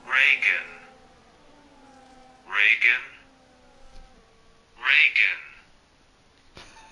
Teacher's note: To pronounce it correctly, emphasize the first syllable